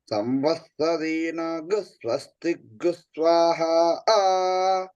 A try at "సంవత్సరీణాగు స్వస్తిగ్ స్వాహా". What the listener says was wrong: సా ఒకటి కిందకేనండి అంతే. సా ఒకటే కిందకి, తత్వాన్ని మధ్యకి.